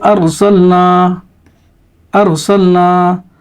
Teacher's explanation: اس سبق میں را کو پر کر کے پڑھنا چاہیے، جیسے یعنی موٹا کر کے